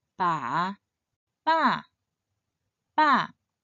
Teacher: This character should be read in the fourth tone.